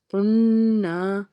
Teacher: قاف کو نون سے ملانا ہے، قاف نون پیش قن، نون الف زبر نہ، قننا، قاف حروف مستعلیہ کا حرف پر پڑھیں گے، آگے نون کے اوپر تشدید، خوب غنہ کریں گے